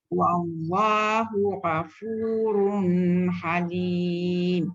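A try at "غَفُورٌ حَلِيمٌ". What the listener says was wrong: Wallahu ghafurun halim. Run pun tak dengung.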